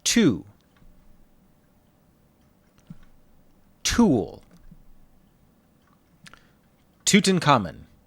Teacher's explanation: English doesn't use the ts sound at the beginning of a word. We have to practice saying tu, not tsu.